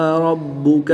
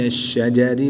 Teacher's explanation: را پر زبر ہے اس لیے را کو پر پڑھیں گے، را کے نیچے زیر ہے تو را کو باریک پڑھیں گے